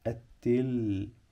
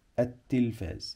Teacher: لان عندي هنا لام شمسيه لا تنطق بنكتبها وما بننطقها عشان هنا حرف اللام جه بعديه حرف